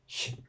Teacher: La S después de una I, que sonaría como una sh, sh, como la X aquí arriba. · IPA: ɕ